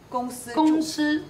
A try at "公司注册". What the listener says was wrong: 公 司 注 册 注 有 卷 舌 ， 注 册 册 没 有